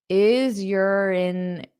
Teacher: So you can use this r to connect to the vowel sound